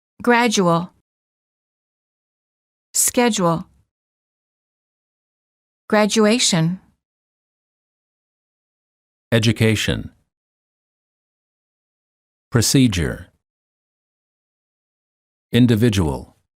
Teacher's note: D plus u is usually pronounced as J as in the word joke